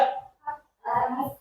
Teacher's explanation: Tahan suara itu at. Nah, tahan suara itu suaranya terputus, tidak bisa dialirkan gitu ya sampai akhir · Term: huruf ta